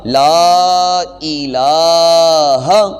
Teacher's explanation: یہ دونوں لام اس کو تھوڑا تھوڑا ایک الف کی مقدار لمبا کریں گے، مکمل تلفظ بنے گا لا الہ، اور ہا کو لمبا نہیں کریں گے، اس کی آواز کو وہاں پہ ہی محدود رکھیں گے